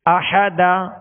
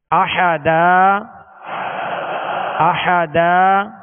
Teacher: 2 زبر کی تنوین کو الف سے بدل کر وقف کریں گے۔